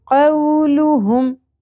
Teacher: واو ساکن سے پہلے زبر حرف لین ہے, نرمی سے پڑھی جائے گی